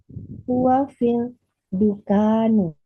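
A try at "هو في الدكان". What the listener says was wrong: huwa fit dukkani. Bitasydidil kaf dengan mentasydidkan kafnya.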